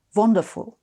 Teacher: The vanishing W, as in what or wonderful. That sound doesn't exist in German either, so you make it a V.